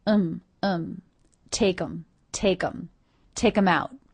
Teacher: reduced the word them to the schwa and the m sound